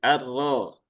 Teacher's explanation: Kalau dia ee harakatnya dommah atau fathah, maka dia menjadi tebal menjadi arro.